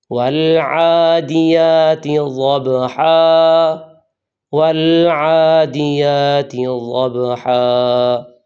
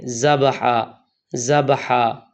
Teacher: یہ ضاد ہے اور اس کا مخرج زبان کی کروٹ اور دائیں یا بائیں 5 داڑیں ہیں